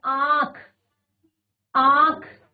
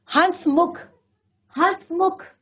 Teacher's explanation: ये मूलतः वे स्वर होते हैं कि इनका उच्चारण मुख और नासिका दोनों से होता है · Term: अनुनासिक